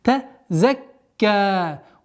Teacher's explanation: Удваиваем ка, потом уходим на долготу в размере естественного удлинения 2 огласовок.